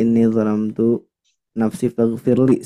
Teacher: Ketika disukunkan, huruf ghain itu tidak memantul, huruf lam juga tidak memantul, Bu.